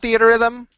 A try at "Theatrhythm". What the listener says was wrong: You're adding a R that's not even there. You guys, you're adding 2 R's. There's not 2 R's.